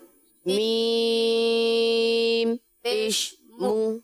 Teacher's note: واو اور پیش ان میں ہونٹ گول ہوتے ہیں. اگر ہونٹ گول نہ کیے تو یہ حروف یا یہ حرکت پیش کی یہ صحیح اور درست ادا نہیں ہوگی.